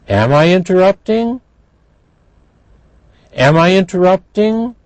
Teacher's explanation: you hear the rising intonation